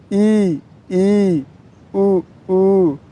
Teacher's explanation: संवृत स्वर, जिन स्वरों के उच्चारण में मुख लगभग बंद रहे